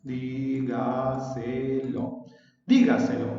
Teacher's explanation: El acento está en la sílaba di. La ubicación es anterior a la antepenúltima sílaba. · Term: sobresdrújula